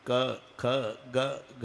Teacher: क ख ग हे कंठे स्थान आहे